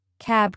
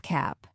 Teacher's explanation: Final consonant devoicing. This is when a voiced consonant at the end of a word becomes voiceless.